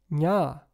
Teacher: nya is a palatal nasal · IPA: ɲ